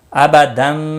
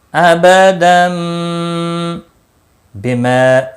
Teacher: تنوین کی آواز کو بدل کر میم میں اخفاء شفوی ہوگا